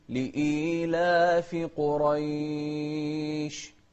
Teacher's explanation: والشين من أحرف التفشي، أو حرف هو حرف التفشي ومن أحرف الهمس